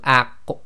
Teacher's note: Now if you try to say this, you go Aq, okay, and you try to say it without an actual echo, you'll find the top of your back of your throat and the back of your tongue come together when you make the Aq sound. Now in order to get the proper sound of the Qaf to come out, you have to separate.